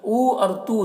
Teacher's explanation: دونوں میں واو مدہ ہے، ایک الف کے برابر کھینچیں گے